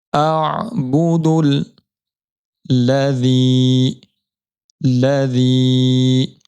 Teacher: دال کو تشدید والے لام کے ساتھ ملانا ہے، درمیان میں الف کو نہیں پڑھنا